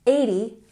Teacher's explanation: put the emphasis on the first syllable